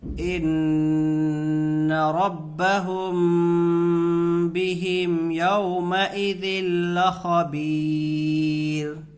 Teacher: یہاں نون میں غنہ ہوگا، نون کے اوپر تشدید ہے۔ میم میں بھی غنہ ہوگا، اس لیے کہ میم ساکن کے بعد با آ رہا ہے